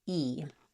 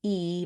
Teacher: This is called a high front vowel. When I say E, my tongue fills up most of the space in my mouth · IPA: /i/